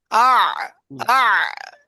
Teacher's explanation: আইন হাটা গলার মধ্যখান থেকে